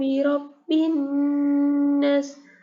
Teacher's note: Harokat di sini berarti saat membacanya seorang menekankan huruf mim dan nun yang bertasdid. Jadi mendengungnya itu benar-benar kerasa sampai ke hidung.